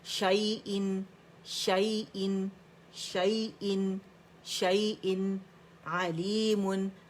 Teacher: जब रवानी करेंगे ना तो नून हम इसमें ज़ाहिर करेंगे, क्यों करेंगे, क्योंकि यहाँ पे हमारे पास इज़हार हकीकी हो रहा है और तन्वीन के बाद हमारे पास आइन आ रहा है, थ्रोट लेटर में से आ रहा है, ठीक है।